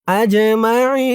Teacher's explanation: এই জিমটা কলকলার হরফ ধাক্কা দিয়ে পড়তে হবে। আজ মা আইন এখানে অক্ফ করার কারণে জেরের পরে ইয়া সাকিন এক আলিফ টান তিন আলিফ হয়ে গেছে মধ্যে আরজি আই বলে তিন আলিফ টান দিয়ে এই নুনকে ধরা হয়েছে।